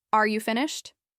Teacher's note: with a falling tone, it might come across as impatient or like you're expecting them to be done already · if you say, Are you finished? with a falling tone, it might come across as impatient